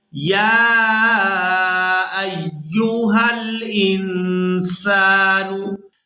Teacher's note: یہاں یا کو کھڑی زبر اور مد کی وجہ سے کھینچ کر ادا کیا جائے گا۔